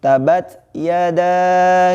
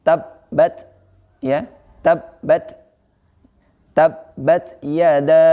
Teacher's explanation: membaca kalimat awal itu dengan tidak mentasjidkan huruf ba.